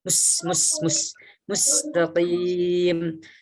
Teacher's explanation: Huruf sin seperti kita ketahui kalau sukun dia desis.